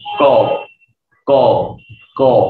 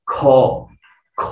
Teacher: আচ্ছা, তো উচ্চারণ করার সময় দেখবেন যে হাতের সামনে মুখের সামনে যদি হাতটা নিয়ে আসেন, আপনি যদি বলেন ক ক ক, বাতাস তেমন নাই। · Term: অল্প প্রাণ